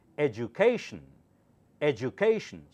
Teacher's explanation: sometimes du sounds like ju this is one of those words where it sounds like ju education education so do not say education that doesn't sound right